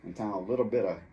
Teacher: E ambas dessas palavras, little e bit, vai ter som de R de gênero, porque little não é little, e bit não é bit, é little bit, mas tem A depois de bit, então, porque essa T tem um vogal em frente e atrás, vai virar som de R, de gênero.